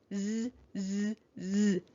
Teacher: So we know that the letter S is making its voiced sound. It's going z, z, z in this word.